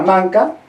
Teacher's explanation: En esta palabra manca, la primera A es más cerrada y la A final de palabra es más abierta. Pero esa diferencia en el oído, que está acostumbrado a distinguir sonidos vocálicos del castellano, no lo distingue.